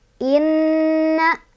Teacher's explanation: Inna, ada hukum gunnah karena nunnya bertasydid. Cara bacanya didengungkan, ditahan 2, 3 atau 4 ketukan.